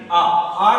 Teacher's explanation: विवर्त स्वर कौन सा होता है, उच्चारण करने पर मुख का सबसे अधिक खुलना